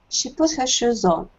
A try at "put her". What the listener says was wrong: No H. Put her. Imagine it's the word putter. P-U-D-D-E-R. Putter.